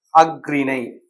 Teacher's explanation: இந்த ஆயுத எழுத்து தன்னுடைய மாத்திரை அளவுல அறையிலிருந்து கால் மாத்திரையாக குறைந்து ஒலிக்கும் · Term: ஆயுத குறுக்கம்